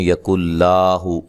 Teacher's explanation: یَکُن لَهُ، لام کو لمبا نہیں کرنا بالکل، ٹھیک ہے، اور دوسرے نمبر پہ یہاں غنہ نہیں کرنا، ادغام تو ہوگا لیکن غنے کے بغیر ہوگا